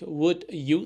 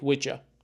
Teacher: Assimilation, sounds influence each other, like would you sounding like would ya.